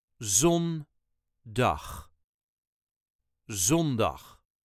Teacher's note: on Saturday zaterdag Last Day Of The Week is zondag zondag The emphasis on the first syllable